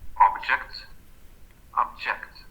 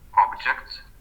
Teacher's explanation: the second vowel in the word object, is more intense than the first vowel